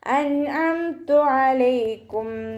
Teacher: നൂൻ സാക്കിനെ വ്യക്തമാക്കി മണിക്കാതെ ഉച്ചരിച്ചു കൊടുക്കുക